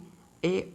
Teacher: ए ऐ का उच्चारण स्थान कंठ तालू होता है